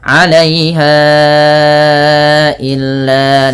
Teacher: Panjangkan bunyi ha yang ditandai dengan tanda pedang kecil seperti ini dan warna pink bertemu dengan hamzah setelahnya. Maka ini wajib dipanjangkan empat harakat pada lafal bunyi ha atau lima harakat karena ia ada hukum tajwid berupa mad jaiz munfasil.